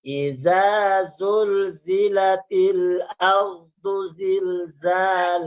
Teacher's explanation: Bacanya dulu rendah, tapi datar ya.